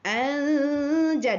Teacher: Jadi di antara an dengan ang, di tengah-tengah disembunyikan. Okey, anja dengung dua harakat kerana berlakunya hukum ikhfa hakiki